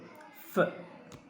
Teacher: F, F means উপরের পাটির দাঁত নিচের ঠোঁট। এফ সেজ ফ, ফ বলার সময় উপরের দাঁত নিচের ঠোঁট কনফার্ম করতে হবে এবং বলতে হবে যে ফ, গিভিং সাম প্রেশার, একটু প্রেশার দিয়ে বলতে হবে ফ।